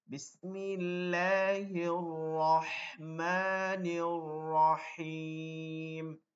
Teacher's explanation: যখন আপনি পড়তেছেন রহ, তখন কিন্তু হা বের হইতেছে না, শুধু ওই বাতাসটাই চলতেছে